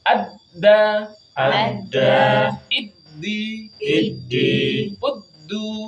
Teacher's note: tidak ada aliran udara tidak ada aliran suara kita melafazkan huruf Dal